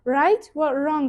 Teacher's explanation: V unchalik aniq eshitilmaydi. Qaysidir ma'noda tushib ham qolishi mumkin.